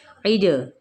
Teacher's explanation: جیم پہ قلقلہ ہے، اس کو ہلانا ہے